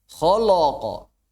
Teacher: Lamnya jadi lo. Gara-gara ketemu kha dan qaf. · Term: huruf yang tipis